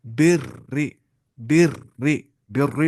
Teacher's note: जेर वाली राय मुशद्ददा है उसको बारीक पढ़ना है